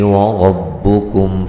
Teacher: کاف کو باریک پڑھیں گے، میم ساکن کا اظہار ہے، غنہ نہیں کریں گے